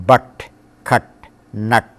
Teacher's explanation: Middle English u was unrounded in modern English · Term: short a